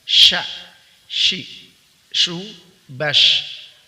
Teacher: Huruf shin, huruf sya dikeluarkan dengan cara mengangkat tengah lidah ke langit-langit, tapi tidak menempel ke langit-langit sehingga makhrajnya tidak tertutup. Sya terangkat tapi tidak menempel ya.